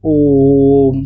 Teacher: तो इसे एक लंबा समय देंगे बोलने के लिए, इसलिए इसे प्लुत स्वर कहा जाता है, जिससे बोलने में ह्रस्व से भी 3 गुना समय लगता है, ठीक है।